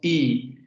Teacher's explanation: El fonema del español es un no redondeado, porque no generamos redondeamiento de labios.